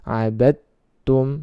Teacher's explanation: cara membacanya adalah dengan meleburkan ke huruf yang kedua